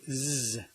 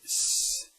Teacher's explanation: And finally, among the consonants, the zeta. In English, you say z. In Swedish, we say s. We don't use the vocal cords.